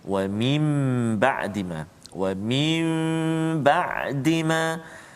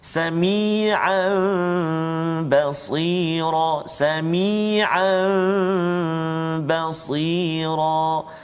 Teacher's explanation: apabila nun sakinah atau tanwin bertemu dengan huruf iqlab, iaitu ba, satu saja huruf iqlab, ba, maka hendaklah diiqlabkan, yakni ditukarkan kepada mim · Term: hukum iqlab